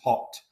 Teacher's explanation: if I use the low back rounded vowel, so RP, HOT becomes hot